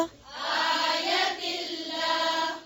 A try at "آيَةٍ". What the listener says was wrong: जी आयत आयात नहीं है आयत फिर से वइन यरौ